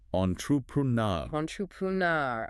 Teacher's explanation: That last syllable, nar, gets the main stress. It's kind of like the sound in Blair, but maybe a bit longer.